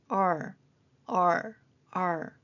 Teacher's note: 그리고 R을 리을처럼 발음하는데 그것이 아니라 혀끝이 입천장에 닿지 않게 뒤로 말거나 당긴 상태에서 내는 소리입니다